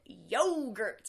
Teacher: the stress on the first syllable, really strong